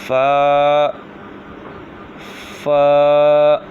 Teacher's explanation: فا جو ہے اوپر کے دانتوں کے کنارے اور نچلے ہونٹ کے تر حصے سے ادا ہوتا ہے